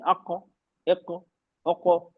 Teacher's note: काफ में हैवी है और इसमें कलकला है। ओके आवाज बाउंस होगी।